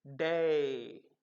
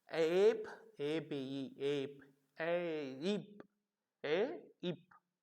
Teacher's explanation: The word sound is beginning at the part of A, and the received pronunciation, it is gliding from A to E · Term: diphthongs